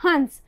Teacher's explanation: यहाँ पर ध्वनि पंचम वर्ण की, न की आ रही है, ये अनुस्वार हुआ